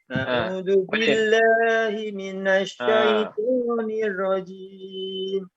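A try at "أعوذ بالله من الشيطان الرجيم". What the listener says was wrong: Huruf ta-nya kena tebalkan. Syaitanir rajim. Bukan syaitan. Dia dari segi dia punya keliling pangkal semuanya terangkat. A'udzu billahi minasyaitan. A'udzu billahi minasyaitan. Huruf ta paling tebal. Huruf ta ni paling tebal. Jadi perlu untuk ditebalkan.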